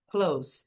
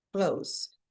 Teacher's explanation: a gente não fala esse the, clothes, é bem mais fácil